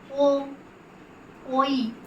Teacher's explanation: ওই ধ্বনিটির মধ্যে ও ই এই দুটি ধ্বনি মিশে রয়েছে এবং ও ধ্বনিটির মধ্যে ও উ এই দুটি ধ্বনি মিশে রয়েছে। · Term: যৌগিক স্বর